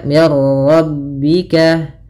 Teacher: idgham itu memasukkan maka masukkan Nun ke ra sehingga suara nunnya hilang